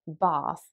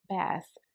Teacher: So for example, in the word bath, a British English speaker almost pronounces it in a way, especially if they're from the south of England, they would almost pronounce it as if there was an R after the A, so bath. Whereas an American English speaker will make more of a kind of A sound in the middle of that word, so they would say bath.